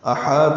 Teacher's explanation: ہا کو 2 حرکات لمبا کرنا ہے، تو پر پڑھنا ہے